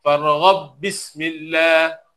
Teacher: ba yang pertama dimasukkan pada ba yang kedua. Oleh kerana ba pertama masuk pada ba yang kedua, ba pertama tak diletakkan tanda su sukun. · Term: Idgham